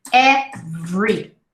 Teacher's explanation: you almost don't hear the schwa